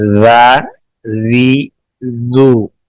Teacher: زال اور سا کی ادائیگی میں زبان کی جڑ نیچے رہے گی، اوپر نہیں اٹھے گی ، زال زال بالکل نرمی سے ادا کریں گے، سا سا